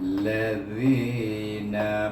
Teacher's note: mad asli, kita baca zi itu dua harakah